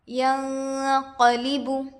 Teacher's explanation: ینقلب، یا پر زبر کی حرکت ہے، جلد پڑھے، نون پر جزم ہے، نون ساکن ہوگا، نون ساکن کے بعد حروف اخفا سے قاف آ کر ہے، اس لیے نون کی آواز کو ناک میں چھپا کر پڑھنا چاہیے۔ اخفا کی مقدار ایک الف کے برابر ہوتا ہے۔